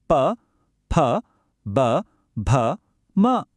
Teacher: ಇದರ ಹೆಸರು ಓಷ್ಟ್ಯ ಇವು ಬಾಯಿಯ ಅತ್ಯಂತ ಮುಂದಿನ ಭಾಗ ಅಂದ್ರೆ ನಮ್ಮ ತುಟಿಗಳು ಅಥವಾ ಓಷಟದಿಂದ ಹುಟ್ಟುವ ಧ್ವನಿಗಳು ಇದಂತೂ ತುಂಬಾ ಸುಲಭ ಹೇಳಿ ನೋಡಿ ಪ ಭ ಎರಡು ತುಟಿಗಳು ಸೇರಿ ಗಾಳಿಯನ್ನ · ಅಥವಾ ಓಷಟದಿಂದ ಹುಟ್ಟುವ ಧ್ವನಿಗಳು ಇದಂತೂ ತುಂಬಾ ಸುಲಭ ಹೇಳಿ ನೋಡಿ ಪ ಭ ಎರಡು ತುಟಿಗಳು ಸೇರಿ ಗಾಳಿಯನ್ನ ನಿಲ್ಲಿಸೋದನ್ನ ನಾವೇ ನೋಡಬಹುದು